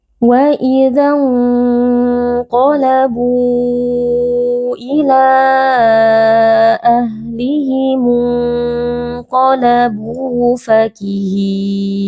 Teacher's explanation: Wa idza, di sini sebenarnya ada mad tabi'i, tapi karena kita wasol dengan huruf yang sukun di depannya maka mad tabi'i tidak dibaca. Wa idza qalabu, di sini ada nun sukun bertemu dengan huruf qaf, hukumnya adalah ikhfa hakiki.